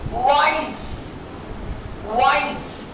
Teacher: your lips are rounding but they are not touching.